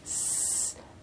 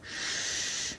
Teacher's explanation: Of course, the shape of the lips also changes to produce s or sh. Yes, for the s, the lips are going towards the side, and the sides of the tongue are touching to produce S, and Sh is a rounder sound. The lips are coming forward to say Sh.